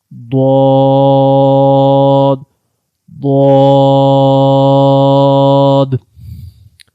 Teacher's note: Dad is read by the sides of the tongues and the root of the upper molars. So try to pronounce Dad from the side of the tongue and the roots of the upper molar.